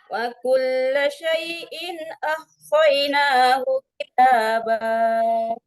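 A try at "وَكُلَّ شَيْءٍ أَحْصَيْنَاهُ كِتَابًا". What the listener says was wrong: Coba diulang ahsainahu, hati-hati tadi agak cepat temponya di situ. Tetap tempo di awal dipakai. Nah, itu kita jangan ditekan di situ ya. Kita datarkan kita boleh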